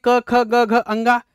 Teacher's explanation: अकुह विसर्ग, यानी इसमें कंठ से बोले जाने वाले